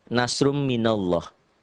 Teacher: Dibaca tebal berbunyi oh Allah karena sebelumnya berbaris di atas atau fathah.